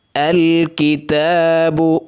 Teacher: تا کے اوپر کھڑی زبر ہے، ایک الف سے زائد اس کو نہیں کھینچنا۔ کتاب، ہونٹ گول کرنے ہیں، با کے اوپر پیش ہے۔